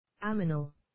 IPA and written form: ˈæmənəl (ammonal)